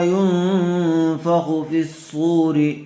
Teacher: نون ساکن کے بعد حروف اخفا میں سے فایا ہوا ہے، اس لیے غنّے کے ساتھ اخفا کر کے پڑھیں گے